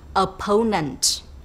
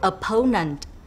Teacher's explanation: for the word opponent stressed is on the second syllable